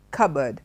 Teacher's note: the P is silent B alone will do and the board is shortened